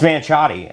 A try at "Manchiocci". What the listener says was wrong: It's not Manchotti. You took half the name out. Manchiocci.